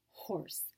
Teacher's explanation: the place of articulation is at the throat and that is a voiceless sound as in the beginning of horse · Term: the throat sound